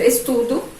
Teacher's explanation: quando a sílaba é fraca, há essa troca de som. O O vai ter o som do U, o E vai ter o som de I. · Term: sílaba fraca